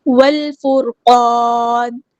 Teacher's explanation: والفرقان، واو کو ہم نے لام کے ساتھ ملا دینا ہے، حمزۃ الوصل ہمارا ڈراپ ہو جائے گا، لام یہاں پہ لام قمری ہے، اس کو ہم ظاہر کریں گے۔ را ہمارا ہیوی لیٹر ہے، پورا ادا کریں گے۔